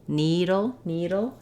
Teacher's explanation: Within the word needle, we have first syllable stress. · And then the letters LE, what we have there is what's called a syllabic L. So I'm going to go from my D sound to my ul sound very quickly without really any sound in between. If there were any sound in there, it would be a short little schwa, a little dull, needle, dull.